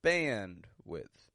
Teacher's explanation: And again, the first syllable is stressed. The second, quick and quiet.